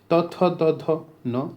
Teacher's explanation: जो जीभ है अब दांत को टच कर रही है इनको बोलते समय। त, थ, द, ध, न, तो इसको दंत्य।